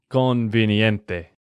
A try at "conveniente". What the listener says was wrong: conveniente. Sí, porque estás tratando de pronunciar esa E más como una I. Y eso es porque en inglés se dice convenient, ¿no? Con I, pero en español es E, conveniente.